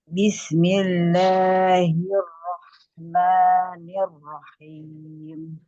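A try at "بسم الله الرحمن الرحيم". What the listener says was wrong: Tapi la sama maknya itu kepanjangan ya. Sayunnya itu kepanjangan. Bismillahir. La sama maknya kurangi panjang.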